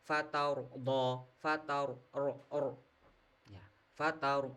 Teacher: Membaca huruf tebal. Tebal. yaitu bibir kita yang bawah ini diangkat ke atas. Kenapa? Sebabnya ada ro sukun didahului harakat fathah dan ditambahi lagi setelah ro sukun itu ternyata ada huruf d. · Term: bacaan tafkhim